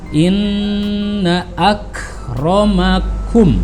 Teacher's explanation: harus berdengung, masuk bergetar ke rongga hidung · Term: guna